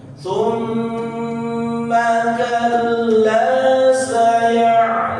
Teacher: mim dan nun bertasydid dia harus ditahan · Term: Mim bertasydid